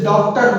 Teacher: चंद्र का प्रयोग करते हैं, जो बड़ा आ और ओ, आ और ओ के बीच की ध्वनि है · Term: आगत व्यंजन